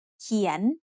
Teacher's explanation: เ ข ี ย น is said with a rising tone because it has a high-class consonant and a live syllable ending